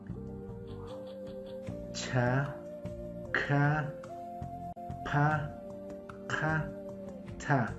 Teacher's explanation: A esta agrega también 10 letras, 5 oclusivas aspiradas, que conjugadas con la A